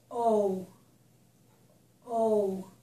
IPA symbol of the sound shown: oʊ